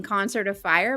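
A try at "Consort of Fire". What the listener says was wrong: Consort. Yeah, I think you said concert. Consort.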